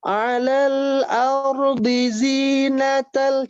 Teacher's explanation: Alal ardi, ya, ardinya dibaca pendek.